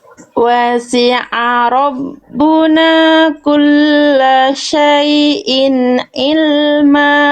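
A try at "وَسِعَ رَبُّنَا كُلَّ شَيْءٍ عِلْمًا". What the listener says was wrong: Tekan lagi sedikit ainnya, kurang neken. Kurang greget ainnya sedikit lagi. Wasi'a rabbuna kulla syai'in ilma.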